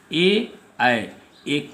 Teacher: ए कंठ और ताल से आवाज़ निकलती है, गले से भी, और जिह्वा क्या है निचले भाग को भी स्पर्श करती है, मुख गुहा के निचले भाग को।